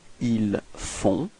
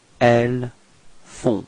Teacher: Okay, so you've got this nasal on, on. Okay, and then the final T is not pronounced